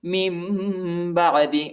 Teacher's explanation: نون ساکن کے بعد با آیا ہے، اس لیے نون کو ہم میم پر تبدیل کریں گے، ٹھیک ہے، من بعد، اور اخفا بھی کریں گے۔